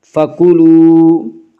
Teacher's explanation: واو مدہ کو ایک الف کے برابر کھینچ کر پڑھیں گے